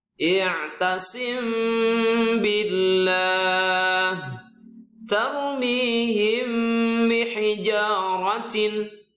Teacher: Jadi mim sukun bertemu ba, dibaca dengung yang lama. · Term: ikhfa safawi